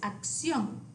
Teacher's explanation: notice that all the words have the accent on the O